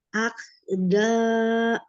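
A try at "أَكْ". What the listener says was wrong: Ya, masih itu terakhirnya ditutup pita suaranya jadi masih berhenti di hamzah.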